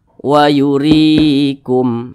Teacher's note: RI dibaca panjang Mad Thobi'i panjangnya satu Alif dua harakat atau kira-kira dua ketukan